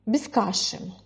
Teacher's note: Без — это слово без ударения, когда вы произносите в речи, не выделяя, как сейчас я, да, а именно просто в процессе, без каши, без — слова без ударения.